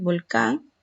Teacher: Entonces, volcán, mayor fuerza de voz, sílaba tónica, acento en la última sílaba. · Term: aguda